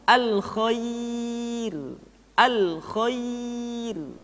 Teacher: ra dibaca dengan tipis ketika didahului oleh huruf ya yang sukun